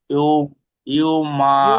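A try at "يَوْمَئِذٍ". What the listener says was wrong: ইউ কেন? ইয়া ওয়াও পেশ ইউ, ইয়া ওয়াও জবর কি হয়? ইয়াও।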